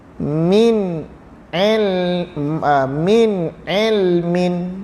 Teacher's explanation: nun mati bertemu ain, diizhar, nyatakan bentuk nun itu.